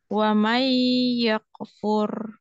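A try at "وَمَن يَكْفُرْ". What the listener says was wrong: Yak, yak, jangan yak kefur, tapi yak. Nafasnya aja yang ini ngalir. Fur, fur, ya ngalir. Suaranya jangan getarannya yang ngalir.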